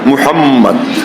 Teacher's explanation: মুহাম্মদ উচ্চারণ করতে গিয়ে দুইবার দুই ঠোঁট লেগে যায়